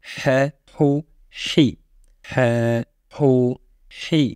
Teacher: La lettre H est une lettre qui va se prononcer au milieu de la gorge et qui a la caractéristique de faire sortir de l'air.